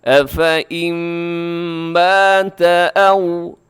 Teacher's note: نون ساکن ہے، نون ساکن کے بعد میم ہے تو یہاں ادغام ہوگا۔ افئم مات او، او کو آؤ نہیں کرنا آپ نے۔